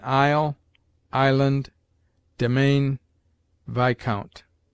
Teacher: S is mute in isle, island, domain, viscount